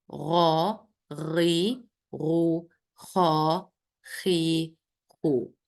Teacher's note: And yeah, if you remember, we said before, letter غاين and خا, they are heavy letters because the back of our tongue, when we pronounce them, raised to the roof of our mouths